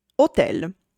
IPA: oˈtɛl